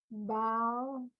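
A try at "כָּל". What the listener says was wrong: It's not a bet.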